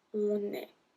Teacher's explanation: Don't forget to make the link here, because on ends with n, a consonant, et est start with e, une voyelle.